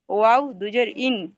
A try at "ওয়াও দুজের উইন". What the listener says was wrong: ওয়াও দুজের ইন নয়, ওয়াও দুজের উইন।